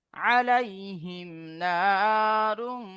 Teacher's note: মিম সাকিনের পরে নুন এসছে তো ইজহারে শাফাবি বিনা গুন্নায় জাইর করে পড়তে হবে